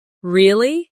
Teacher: For example, when they are surprised, their voice goes up